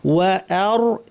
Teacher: এখানে ওয়া সাবলীল, আ শক্ত, র ভারী, ওয়া আর সব ভারী করবেন না, ওয়া আর।